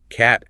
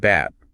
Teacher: your ear capturing the tiny puff of air that makes a C sound versus the sudden vibration of the lips that makes a B sound